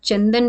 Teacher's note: होते हैं अंग और अह यह हमारे कहलाते हैं अयोगवाह अंग अनुस्वार बोला जाता है जिसका उच्चारण नाक की सहायता से किया जाता है जैसे आप चंदन बोलते हैं तो अंग की बिंदी जो होती